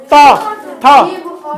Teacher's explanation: तो देखो त वर्ग में किसका किसका लड़ाई होता है? त, थ, जीभ और दांत पूरा आके एकदम जोर जोर से टकराता है, एकदम ठन ठन आवाज करेगा, एकदम धमाधम।